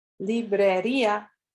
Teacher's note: The I is strong and has an accent mark, and it separates from the A to form an extra syllable.